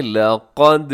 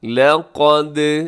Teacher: دال ہوگا قلقلہ اور قاف اس کے اندر موٹا پڑا جائے گا